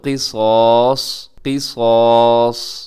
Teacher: اب یہاں پہ قاف موٹا ہے، صاد بھی موٹا، الف بھی موٹا ، اور آخر میں جو صاد آتا ہے وہ بھی موٹا